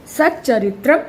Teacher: तो त जो था वो च में बदल गया, सच्चरित्रम हो गया, है ना।